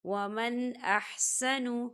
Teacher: حمزہ جو ہے حروف ہلکی کا ورڈ ہے، تو یہاں پر اظہار ہوگا۔ ہم نون ساکن کی آواز کو صرف ظاہر کریں گے